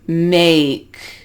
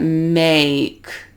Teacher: So we start at the A and it kind of goes up. Make. And if you watch my jaw as I say that, make, you see it moving.